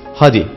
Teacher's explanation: Y harfi de tıpkı yumuşak G gibi bazı durumlarda düşer. Haydi'deki Y harfini söylemeyiz, hadi deriz.